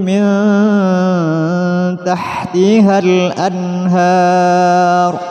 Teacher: Nun mati bertemu ha, hukumnya izhar, jadi dibaca jelas.